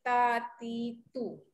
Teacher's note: Okay, ada ta, dal dengan to. Makhraj huruf ta, dal dengan to ni, dia kena naik, pergi gusi atas.